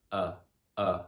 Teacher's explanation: it's a very neutral vowel very relaxed we love this sound schwa so much because she's so easy